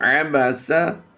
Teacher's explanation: عبسہ عین کی ادائیگی ہم نے واضح رکھنی ہے کہ حمزہ کے ساتھ اس کی آواز میچ نہ ہو۔ آباسا نہیں پڑھیں گے۔